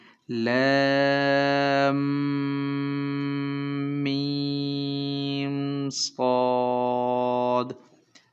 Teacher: میم کے اوپر غنہ کر رہے ہیں، ناک سے آواز نکال رہے ہیں اور 3 سیکنڈ نکالتے رہیں گے